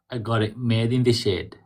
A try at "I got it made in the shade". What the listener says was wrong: So when we say this, we try to, a little more like upbeat, funky, like, I got it made in the shade. Made in the shade. Dun, dun, dun, dun. You have to loosen up. You're too formal.